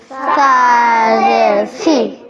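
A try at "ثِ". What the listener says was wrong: এই জিহ্বা, এই সা নরম হবে, বুঝছো? সা জের সি।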